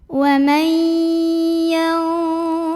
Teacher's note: Cara membacanya dipantulkan ba-nya dengan pantulan yang kecil saja ya dan tetap dialirkan. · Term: qalqalah sughra